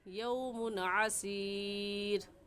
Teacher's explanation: यौमुन की तनवीन पर हम गुन्ना नहीं करेंगे क्योंकि तनवीन के बाद हरूफ हल्की जो कि 6 है, हमज़ा हा, आइन हा, गैन खा में से आइन आ गया है, तो हम गुन्ना नहीं करेंगे बल्कि जल्दी से पढ़ जाएंगे यौमुन आसीर, फ़ज़ालिका यौमाइज़िन यौमुन आसीर।